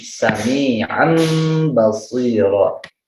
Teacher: mengganti suara nun matinya digantikan atau berganti dengan suara mim. Sami'an basiro diganti jadi mim. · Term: iqlab